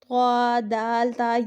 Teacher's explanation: جو زبان کی نوک ہوتی ہے، جب وہ سامنے والے جو اوپر کے دانت ہیں ان کے اندر والی جڑ کے ساتھ ہم لگاتے ہیں تو طا ادا ہوتا ہے